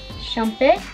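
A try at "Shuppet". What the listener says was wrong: Shumpet, don't add letters. Shumpet, like a trumpet.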